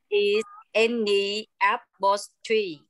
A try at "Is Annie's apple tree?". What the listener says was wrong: Annie's có chữ S. Annie's.